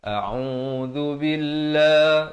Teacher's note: zal di hujung lidah, dan lafz jalalah dibaca nipis 2 harakat.